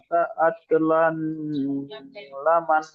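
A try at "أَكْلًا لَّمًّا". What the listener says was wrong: আকলাল লাম্মা, লামান হবে না, আকলাল লাম্মা। লা- লাম্মা, লাম মিম জবর লাম, মিম আলিফ জবর মা। না, এই লামটি এইখানে তো লাম, লামটি মিমের তাজদিদের সাথে যুক্ত হবে। লাম মিম জবর লাম, মিম আলিফ জবর মা।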